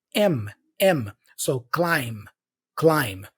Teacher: b the B is silent so I don't say climb climb imagine there's no B and you pronounce the M instead